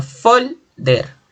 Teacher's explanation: Por ejemplo, folder es grave porque tiene la mayor fuerza de voz en la penúltima sílaba y termina en R, que no es ns o vocal.